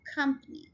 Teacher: Company, it's a 3 syllable word and we are stressing the first syllable